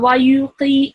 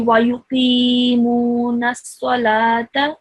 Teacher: you need to pronounce that qi sound for 2 seconds because it is followed by a ya. Okay, ya with a sukoon.